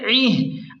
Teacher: عین کو حلق کے درمیان سے صاف نکالیں